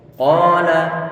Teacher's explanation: pengucapannya dia itu pangkal lidah dia turun ke bawah ataupun lidah dia berada di posisi bawah, tidak terangkat ke atas sehingga dia tipis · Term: istifal